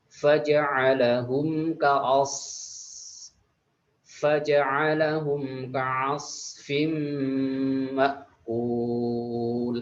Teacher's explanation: Lalu ketika ketemu dengan izgham birunnah, fim ma'kul, fim tidak dibaca dengung. Lalu ada hamzah sukun ini ketika diucapkan itu harus kuat atau tertahan atau syiddah namanya